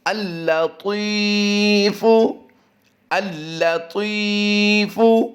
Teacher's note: ती की अदायगी पुर होगी और लंबा भी करेंगे